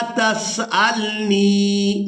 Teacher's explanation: नून को याई मद्दा की वजह से खींचकर अदा करेंगे